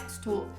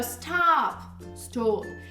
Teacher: Esse O mais fechado mesmo pro britânico.